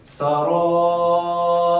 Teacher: دا را ډکه ویل کیږي غټه ځکه زبر د پی